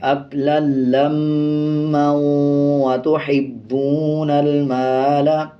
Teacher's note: اور اگر آپ اس پہ وقف نہیں کریں گے، ملا کے پڑھیں گے، تو پھر واو کا شد پڑھا جائے گا اور غنہ کریں گے